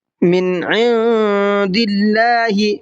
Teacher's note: من عند اللہ، من کے اندر اظہار کرنا ہے کیونکہ نون ساکن کے بعد میں عین ہے، اور عند کے نون کے اندر اخفا کرنا ہے اس لیے کہ نون ساکن کے بعد میں دال ہے. دال اخفا کے حرفوں میں سے ہے اور عین اظہار کے حرفوں میں سے ہے.